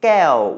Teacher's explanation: it's falling tone because of a mid-class consonant and maito